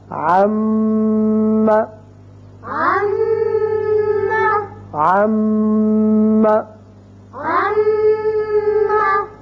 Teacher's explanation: جب ان کے اوپر شد آ جائے تو وہاں آواز رکے گی ایک الف کے برابر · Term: غنہ